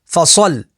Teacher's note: صاد حروف مستعلیہ میں سے تو اسے پور یعنی موٹا پڑھیں گے، لام کے اوپر تشدید ہے تو تشدید والے حرف کو 2 دفعہ پڑھیں گے۔